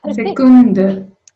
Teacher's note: Very long vowels because we have just one consonant after the vowels.